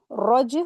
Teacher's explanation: जीम यहां पर बीच में आई है तो कलकला सुगरा हो रहा है